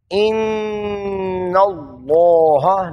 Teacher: مشدد نون جب ہو تو ناک میں آواز کو لے جاتے ہیں۔ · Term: نون مشدد